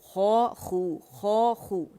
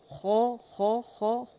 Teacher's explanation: اس کو گولائی دینے، complete رول کرنے ہیں لپس کو، اور موٹا بھی پڑھنا ہے